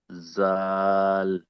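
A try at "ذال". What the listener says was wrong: জাল টান না, একটু তিন আলিফ টান আছে। জাল, টান দিয়ে পড়তে হয়, টান না দিলে তো সই শুদ্ধ হলো না, তাহলে আমি সেই বাংলা পড়ার মতো বাংলা দেখে পড়ার সময় হয়ে গেল।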